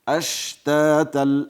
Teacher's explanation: شین ساکن ده آواز ټکان پیدا نه کی